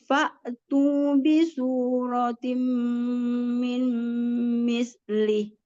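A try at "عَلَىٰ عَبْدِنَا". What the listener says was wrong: Tapi itu matnya pada kepanjangan sedikit. kepanjangan gitu. Jadi ala abadina. iramanya ya. Kalau nggak ada iramanya, jadi bacanya ala abadina.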